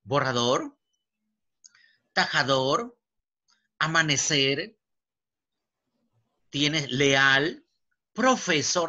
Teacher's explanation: O sea, tengan el acento prosódico. Pero la mayor fuerza de voz es en la última sílaba. Entonces acá tienes, pues, como te decía, borrador, tajador, amanecer, tienes leal, profesor, acuérdate esta palabra.